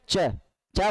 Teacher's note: आपका जो तालू है वहां जाकर जीभ है वो टकराती है